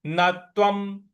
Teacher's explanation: व के ऊपर जो अनुस्वार है उसका उच्चारण हमको म ले आना है